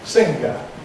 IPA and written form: ˈsɪŋgə (singer)